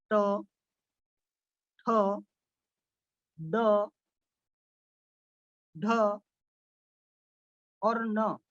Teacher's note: ये जो उच्चारण है यह मूर्धा से होता है। ट वर्ग का उच्चारण मूर्धा से होता है।